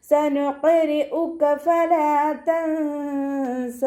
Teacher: നൂൻ സാക്കിനെ മറച്ചു വെച്ചിട്ട് 2 കൗണ്ട് നീട്ടി നിർത്തി കൊടുക്കുക · ഖാഫ് ഇസ്തിഅലാൻ്റെ ലെറ്റർ ആയതുകൊണ്ട് തഫ്ഹീം ചെയ്തിട്ട് ഉച്ചരിക്കുക. കൽക്കലയുടെ ലെറ്ററും കൂടി ആയതുകൊണ്ട് ഫുൾ സുക്കൂന് കൊടുക്കുക കേട്ടോ. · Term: ഇഖ്ഫാവിൻ്റെ അക്ഷരമായിട്ടുള്ള സീന്